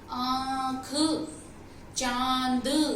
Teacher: तो अनुनासिक, इसीलिए हम इसे अनुनासिक कहते हैं, क्योंकि मुंह के साथ साथ हमारी नाक भी उसमें काम करती है